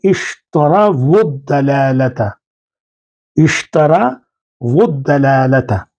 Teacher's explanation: جو آپ کو حمزہ نظر آ رہی ہے وہ حمزۃ الوصل ہے، یعنی پیچھے سے جب کوئی لفظ اس کے ساتھ ملتا ہے تو وہ تلفظ سے گر جاتی ہے